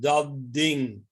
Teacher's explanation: Now, in standard Dutch, as it is spoken in Holland, you have a forward sandhi. The first word dat adapts to the next word ding. So you get dat ding. It's voiced, dat ding. Whereas the first word dat normally ends in an unvoiced sound, dat.